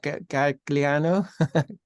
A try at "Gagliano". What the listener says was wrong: You don't pronounce the G. It's Monica Gagliano.